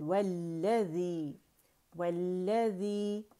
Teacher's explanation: و باریک ہے اور لام مشدد،